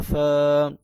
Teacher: فا کے اوپر صرف کھڑی زبر ہے لہٰذا اس کو کم لمبا کریں گے